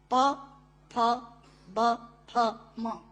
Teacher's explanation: प, फ, ब, फ, म दोनों होंठ मिलाकर बोले जा सकते हैं। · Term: ओष्ठांग